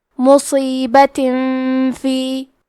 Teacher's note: ہم تنوین کو چھپاتے ہوئے اور غنہ کے ساتھ یہ حکم کو ادا کریں گے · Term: اخفاء